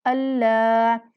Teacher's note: لام کو مشدد پڑھتے ہوئے ایک الف کے برابر لمبا کرنا ہے